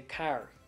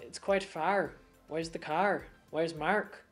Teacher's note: You're changing your R's, and you're switching those from AR to an OUR sound.